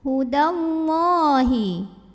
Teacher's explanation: Wah, mad asli atau mad tabi'i karena ada baris fathah tegak di atas huruf lam, maka panjangkan lamnya dua harokat.